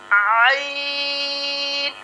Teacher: आइन का जो मखरज है वो होगा हलक के दरमियान वाले हिस्से से ये हर्फ अदा होता है।